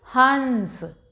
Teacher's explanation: अंग की मात्रा है इसका उच्चारण हम नाक से करेंगे। इसकी ध्वनि नाक से निकलेगी।